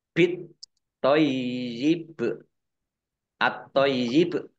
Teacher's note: alif lam samsiah karena tidak dibaca. Langsung masuk ke huruf berikutnya, yaitu tok, ditandai toknya ada tasdidnya.